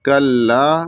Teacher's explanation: कल्ला छोटा काफ है और लाम मुशद्दद है और लाम के बाद अलिफ है तो एक अलिफ के बराबर और खींचेंगे